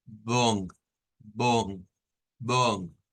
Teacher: si bien es cierto es una o pero es una o nasalizada